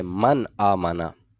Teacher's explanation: تو من آمنا کر کے پڑھنا جو ہے یہ درست نہیں ہے، بلکہ کیا ہے کہ اس کو بغیر غنہ کیے صرف اظہار کریں گے، من آمنا. صرف یہاں پر اظہار کریں گے، من آمنا.